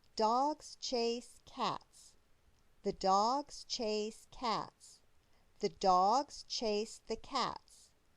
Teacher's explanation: each sentence has three stressed syllables dogs chase and cats